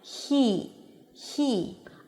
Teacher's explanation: because there is a high E right after, you really hear the air passing between the tongue and the upper pallet.